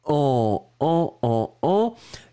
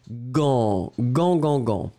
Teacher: Alors effectivement, bah là c'était le premier, hein, donc G-A-N-T, T final qui n'est pas prononcé, G avec, en tout cas suivi du A, on se souvient que le G va être prononcé comme un G-G-G-G, donc vous avez après uniquement la nasale